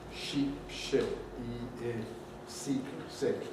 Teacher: the important difference is not really duration. The important difference is tensity, quality.